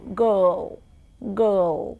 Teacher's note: If you look at girl in spelling, Girl, I and R together there is no R in pronunciation.